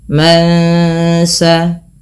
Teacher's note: ketika bertemu Sin nunnya disamarkan kepada bunyi Sin terdengar bunyi Eng maka ini kita namakan dengan bacaan tajwidnya ikhfa Hakiki ikhfa Hakiki